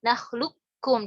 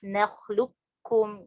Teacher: Jadi sifat qafnya enggak ada, langsung ke kaf. Tapi kalau misalnya riwayat Hafs an Asim, thoriqahnya Syatibiyah, itu bacanya diidgham kamilkan, jadi nggak disisain isti'lanya.